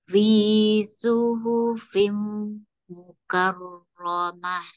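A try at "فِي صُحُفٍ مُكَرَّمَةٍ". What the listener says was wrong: Masih ya terdengar mah mah mah dialirkan. Mah. Mah. Fi suhufim mukarromah.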